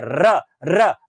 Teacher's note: है सबसे ऊंचाई वाले प जबान यहां जाएगी और फिर आएगी हवा के चौके को ऊपर फेंकते है तो वहां रगड़ खाती है और रगड़ खाने के बाद कंपन होती है वाइब्रेशन होता है गुंजन होता है और वो गुंजन बार-बार रिपीटेशन में होता है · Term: प्रकंपित ध्वनि